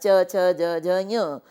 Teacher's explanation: इ च वर्ग के वर्ण य और श इनको बोलते समय मुख का तालु का भाग ही प्रयुक्त होता है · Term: तालव्य